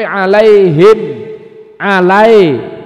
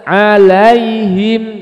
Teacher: Ya Sukun sebelumnya Fatah harus jelas harakatnya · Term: Lin